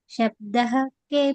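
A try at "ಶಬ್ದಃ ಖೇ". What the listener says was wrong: ಶಬ್ದಹ ಅಂತ ಹೇಳಬಾರದು ಶಬ್ದ ಅಂತ ಕಟ್ ಮಾಡಬೇಕು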